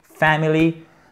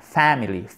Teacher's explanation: accent tonique sur la première syllabe, à court, pas family, non, family.